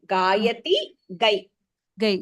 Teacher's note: There is no Mahaprana sound there.